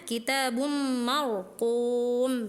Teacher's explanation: ada ro yang harusnya dibaca tebal